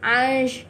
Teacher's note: Kita kena baca jelas sebab tanwin bertemu huruf ain adalah izhar halki. Izhar halki maksud dia jelas, terang, nyata.